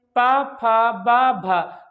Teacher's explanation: ओठ हमारे, ओठ एक दूसरे को स्पर्श कर रहे हैं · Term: ओष्ठ ध्वनियां